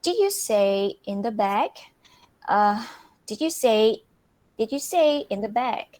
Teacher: So the rising intonation is used for the word back. So it means that back is most important information in the questions.